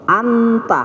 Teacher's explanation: nun sukun itu berada pada gusi atas, sedangkan ta itu maju sedikit, pangkal gigi di atas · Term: ikhfa aqrab